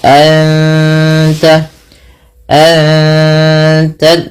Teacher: Nun mati bertemu ta dua harakat sambil ditahan gunahnya. Ditahan bunyi suara dengungannya. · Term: ikhfa hakiki